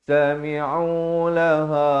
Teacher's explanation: ha di pangkal kerongkong.